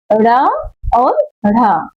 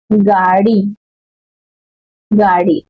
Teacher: इनके उच्चारण में जिह्वा जीभ के ऊपर उठकर झटके के साथ नीचे गिरती है। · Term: उच्छिष्ट व्यंजन